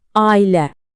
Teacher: əgər saitlər fərqlidirsə, məsələn ailə sözündə aralarına sanki bir y səsi əlavə edirik.